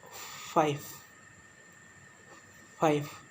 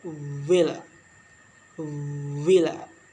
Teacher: Consonant sound which are produced by contracting the lower lip and upper teeth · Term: Labial dental sounds